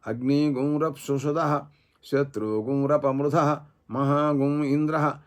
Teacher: తర్వాత అక్కడ అగ్ని యుగం అన్నప్పుడు ఈకారం తర్వాత శత్రువుని దగ్గర ఉకారం తర్వాత అనుస్వార ఆగమంగా రావటం అది వ్యాస శిక్ష ప్రకారంగా గకార సంయుక్తంగా రావటం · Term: గకార సహిత అనుస్వారోచ్చారణ